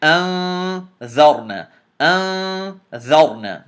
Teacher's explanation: This noon has to be hidden in your nose.